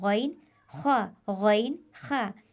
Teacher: गले के ऊपर वाले हिस्से से अदा होने वाले हरूफ दो है ईन और खा जिसे अदना हलक कहते ये देखिए गले का ऊपर वाला हिस्सा · گلے کے اوپر والے حصے سے ادا ہونے والے حروف 2 ہے، غین اور خا، جسے ادنائے حلق کہتے ہیں۔